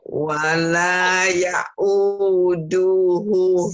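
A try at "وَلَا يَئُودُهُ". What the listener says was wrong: Du-nya pendek, Bu. Nih dengerin ya, Bu ya.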